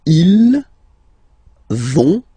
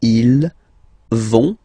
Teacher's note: So ils vont, final T not pronounced